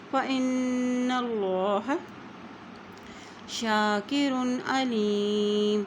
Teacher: यहाँ अल्लाह का नाम भी मोटा अदा किया जाएगा क्योंकि अल्लाह के नाम से पहले ज़बर आ गया है।